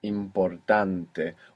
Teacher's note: Where is the stress there? In the second last.